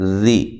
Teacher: سامنے والے دو دانت کے کنارے پہ زبان کی نوک کو لگا کر جو ہے وہ ذال کو نکالنا ہے